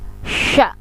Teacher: Sya, pertengahan lidah bertentangan dengan langit-langit.